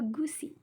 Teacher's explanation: bunyi belakangnya itu tinggi, terbuka, dan bulat